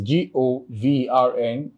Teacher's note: The syllabic division here is G-O, then V-R-N. You can see that in govern, the stress is placed on the first syllable.